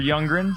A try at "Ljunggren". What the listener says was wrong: Ungren. You said like one grin. It's like Dolph Lundgren. But you said it's pronounced Ungren, isn't it? Or Ungren.